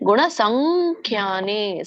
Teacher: ಇಲ್ಲಿ ಮುಂದೆ ಸಂಖ್ಯಾ, ಮುಂದೆ ಏನಿ ದೊಡ್ಡ ಖ ಇದೆ, ಖ ವರ್ಗ. ಅದು ಖ ವರ್ಗ ಅಂತಂದ್ರೆ ಕೊನೆಗೆ ಅನುನಾಸಿಕ ಬರೋದೇನು? ಖ ಕ ಗ ಗ ಂಗ ಅನ್ನುವಂಥ ಅನುಸ್ವಾರ ನಾವಲ್ಲಿ ಬಳಸ್ಬೇಕು.